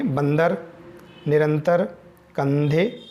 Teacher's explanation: अनुस्वार वाले जो शब्द हैं उनको बोलने में जो हवा है नाक से निकलती है